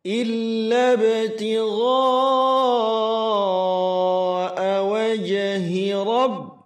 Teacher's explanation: tigha ini mad wajib muttasil 4 atau 5 harakat dipanjangkan